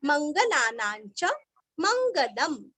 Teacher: ना के ऊपर अनुस्वार का उच्चारण आधा न, क्योंकि आगे च आया हुआ है